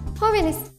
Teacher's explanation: La palabra jóvenes tiene su acento en antepenúltima sílaba, por lo tanto, pertenece al grupo de las esdrújulas y todas se tildan.